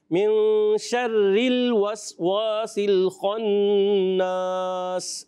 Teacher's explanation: شر را کو باریک رکھیں